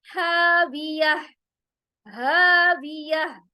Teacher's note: हा हुरूफे हलकी है, डीप थ्रोट से अदा होगा। ह अलिफ मद्दा के साथ।